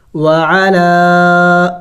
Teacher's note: لام کو کھینچیں گے زیادہ، ایک الف کے مقدار سے زیادہ کھینچیں گے، لمبا کریں گے